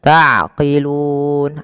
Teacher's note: Mim mati bertemu ta sama izhar syafawi, dijelaskan mimnya